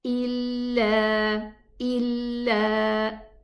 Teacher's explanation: 2 counts for the alif and 2 counts for the ya sukoon with a kasra before it. They are both elongating letters.